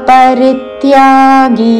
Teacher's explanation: రీ మీద ఆఘాతతో పరిత్యాగి చివరిలో గీ దీర్ఘము.